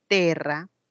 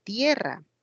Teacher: Por ejemplo, si en el latín había una palabra como terra, ahí estaba la vocal E, terra, luego pasó como tierra. Eso se llama diptongación. Diptongo, E, se convierte en IE